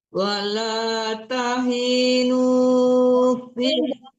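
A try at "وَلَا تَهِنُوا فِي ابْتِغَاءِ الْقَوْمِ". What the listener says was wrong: Hi-nya jangan ditahan. Tahinu, hi-nya tidak panjang.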